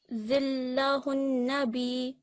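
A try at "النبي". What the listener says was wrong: So not quite an-nabi, so we don't want to prolong it. An-nabij. Yeah, so just very quick, but you want that emphasis from the shadda.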